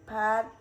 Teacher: For example, aspirated p at the beginning of a stressed syllable, p is pronounced with a small puff of air.